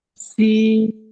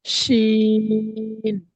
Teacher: সিনটি দন্তেস স দিয়ে উচ্চারণ হয়, আর শিনটি তালবেশ স দিয়ে উচ্চারণ হয়। অর্থাৎ সিনটি একটি সিটির মতো আওয়াজ হয়, আর শিনটি একটু ভারী চাপা গর্জন আওয়াজ হয়।